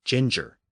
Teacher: the modern form of the word is ginger, pronounced with soft G's, which is a French pronunciation. The Latin pronunciation would have used hard G's.